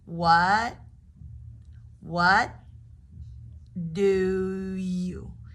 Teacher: We just put all three words into one. You've got the T as a stop consonant, moving on to the D.